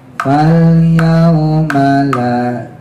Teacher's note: ma-nya pendek, la-nya panjang